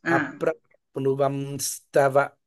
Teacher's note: అప్రాప్నువం స్తవ పదాంబుజమాశ్రితో భూత్ అప్రాప్ణువన్ స్తవ పదాంబుజమాశ్రి తో భూత్ అక్కడ అప్రాప్వం అప్రాప్వం స్తవ అన్నప్పుడు కంప్లీట్ గా పెదాలు మూసేయాలి